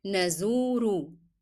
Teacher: Then I want you to remember to lengthen the sound of u.